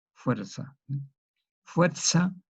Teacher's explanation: Un español diría fuerza. Nosotros la pronunciamos como una S por el ceseo.